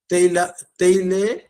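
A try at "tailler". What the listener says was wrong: আচ্ছা এখানে একটু আছে, কেল তাইয়ে, তাইয়ে, না এল এল উচ্চারণ, আই ডাবল এল ই থাকলে মাঝখানে ডাবল এল স্টপ, ওটা হয় না।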